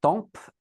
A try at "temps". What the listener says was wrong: temps. Le P, on ne prononce pas. Le temps.